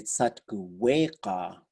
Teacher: you might hear people say Satkuweka with a W instead of a Y